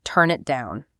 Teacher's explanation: It's a phrasal verb, and the stress usually lands on the word down.